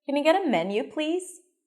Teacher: If you raise your pitch at the end, this rising intonation, it sounds more open.